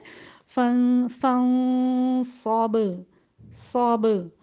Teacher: اس میں پہلے شدت ہے با کے حرف میں، اس کے بعد جب اس کو چھوڑا جاتا ہے تو جھٹکے سے چھوڑا جاتا ہے اور یہ ہو جاتا ہے فن فن صوب صوب. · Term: قلقلہ